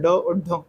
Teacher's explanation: ड और ढ जिनके उच्चारण में जीभ ऊपर मूधा को स्पर्श करती है। तुरंत नीचे की आती है। उक्षिप्त व्यंजन कहते हैं।